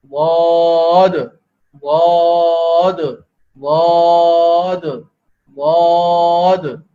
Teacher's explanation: سر زبان یہ حاف لسان سے ادا ہوگا. حاف لسان اوپر کی داڑوں کے اندر کی طرف سے لگیں گے تو یہاں سے یہ آواز پیدا ہوگی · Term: ضاد